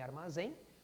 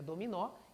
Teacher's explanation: todas as três tem a sílaba tônica na última posição são todas as oxítonas